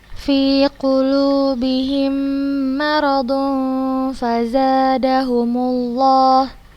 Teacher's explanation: Dibacanya samar, maka hukumnya ikhfa hakiki.